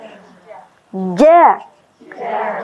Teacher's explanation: ini keluarnya dari tengah lidah. Jadi lidah yang bagian tengah itu yang naik ke atas. Jadi bukan ujung lidah.